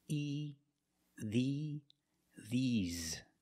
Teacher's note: I use the long e like green beans the mouth is more closed and you smile a little bit